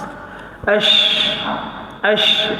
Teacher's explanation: Huruf shin dia bersifat dengan hams.